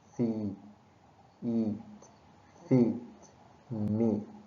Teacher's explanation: This sound is long and tense.